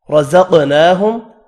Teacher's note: را زبر کی وجہ سے پر پڑھیں گے